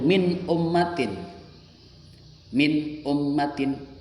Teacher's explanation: cara membacanya jelas tanpa mendengung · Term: Idhar halq